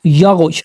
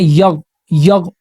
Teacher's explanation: صحیح کیا ہے یغ، یغ ادائیگی کرنی ہے لیکن غین کے اوپر قلقلہ نہیں ہونا چاہیے، آواز وائبریٹ نہیں ہونی چاہیے، آواز دوبارہ لوٹ کر نہیں آنی چاہیے.